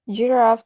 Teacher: Giraffe has an iambic or weak strong stress pattern. The first syllable G is unstressed, and Raf carries the stress. · The first syllable G is unstressed, and Raf carries the stress. The child drops the weak syllable entirely, keeping only the stressed one.